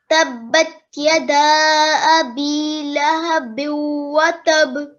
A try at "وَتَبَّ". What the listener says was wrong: تب تشدید ہے نا.